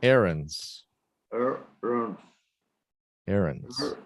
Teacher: Mas é quase não existe o D.